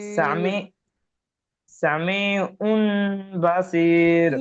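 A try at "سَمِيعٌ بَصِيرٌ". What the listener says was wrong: উন বলছেন কেন? হামজা দুই পেশ উন কি আছে না? আইন মিম দু পেশ উম, আইনটা গিয়ে মিমের ধরবে। উম, উম বাসির সামি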